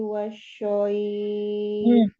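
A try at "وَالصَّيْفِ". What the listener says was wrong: Jangan syoib. Tapi mana tadi? So ya. Ujung lidah. So. Jangan tengah lidahnya. Tengah lidahnya turun ini. So. Wasoif.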